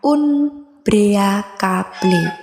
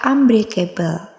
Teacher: Kata unbreakable terjadi perubahan dan penyamaan fonem secara total sebab fonem N atau dental berubah total menjadi fonem M, bilabial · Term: asimilasi fonemik